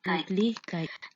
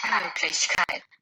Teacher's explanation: From the native recording, we can see that the first syllable has the longest duration and also the highest pitch.